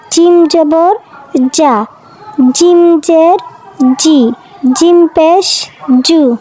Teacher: জিম জিহ্বার মধ্যখান তার বরাবর উপরে তালুর সঙ্গে লাগে,